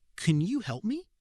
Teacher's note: The A in can becomes uh and the O in you vanishes. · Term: vowel reduction